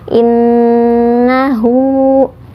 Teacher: Nun ada tasydidnya jadi ditahan dua harakat in nahu seperti itu kemudian hu hu ini Mad Silah qasirah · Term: gunnah